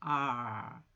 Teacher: R은 발음을 입천장에 혀를 대지 않고 네, 띄워서 저 안으로 말아주는 거죠